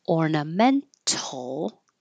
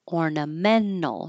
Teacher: you can say with the T, ornamental, or drop the T, ornamental. Your tongue's going to the N, and then instead of releasing the airflow T and back for the L, you just make it an N, ornamental, ornamental.